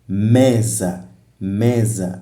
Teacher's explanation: a sílaba me é a tônica que tem maior intensidade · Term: sílaba tônica